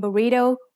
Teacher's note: the wr in burrito when spoken by a native spanish speaker in other words this is an r sound with a trill